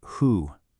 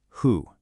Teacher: My lips are already rounding up to make that ooh sound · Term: the H sound